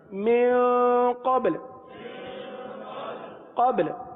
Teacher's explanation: با پر قلقلہ کریں اور لام کو ساکن کر دیں